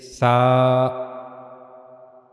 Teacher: in sa we have to put the tip of tongue on the front teeth on the edges of the front teeth.